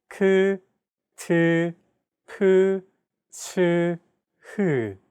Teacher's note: Aspirated sounds are pronounced with a big burst of air, unlike plain sounds which do not have this quality.